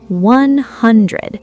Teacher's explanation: Let's break down 100. 100. The stress is on hun.